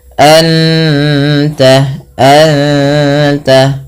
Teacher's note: sambil ditahan gunahnya sambil ditahan bunyi suara dengungannya